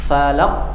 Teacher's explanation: Ditekan suaranya falaq. Nah, setelah ditekan keluar pantulan dari melepasnya makhraj. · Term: qalqalah kubra